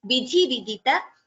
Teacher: Only thi is Mahaprana. Ta is Alpaprana.